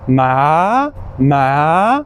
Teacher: So when we're putting that on top of the pinging, it would sound something like ma, ma. Like the second tone is the rising tone, kind of like you're shocked.